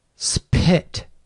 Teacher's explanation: I'll produce Spit with aspiration spit I can do it but it sounds really off the